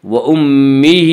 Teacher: من اخیہ، یوم یفر المرء من اخیہ وَأُمِّهِ وَأَبِيهِ، وَأُمِّهِ میم مشدد غنہ ہوگا، غنہ کی مقدار 1 الف ہے۔ وَأُمِّهِ، ہا کے نیچے کھڑی زیر ہے، کھڑی زیر قائم مقام ہے یا مدہ کے، اس لیے کھڑی زیر کو 1 الف کے برابر کھینچ کر پڑھیں گے